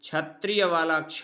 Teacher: अब देखिए क और षष्ठी सा अर्थात मूर्धन्य शकार से क और मूर्धन्य श, इन दोनों के संयुक्त होने से क्षत्रिय वाला क्ष बनता है, इसलिए यह संयुक्त व्यंजन है।